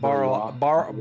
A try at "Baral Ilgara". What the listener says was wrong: Baral Ilgara, because it's an I. It's not an L.